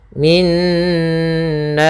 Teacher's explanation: pada lafal nna atau Nun bertasdid di sini kita namakan dengan bacaan gunah yaitu cara membacanya adalah suara nunnya ditahan dulu min baru masukkan kepada nanya min dua harakat nnya baru kena